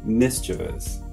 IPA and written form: ˈmɪs tʃə vəs (mischievous)